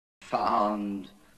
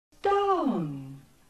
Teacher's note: Note on the chart how this closing diphthong doesn’t end very close at all, not even at the level of the ʊ symbol. Gimson also tells us that the final rounding was weak, and many RP speakers had hardly any rounding at all.